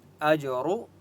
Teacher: فَلَهُ أَجْرُهُ، جیم کے اوپر سکون ہے اس لیے حمزہ کو جیم کے ساتھ ملائیں گے اور جیم کے اوپر قلقلہ ہوگا. اجرو، را کو پر پڑھیں گے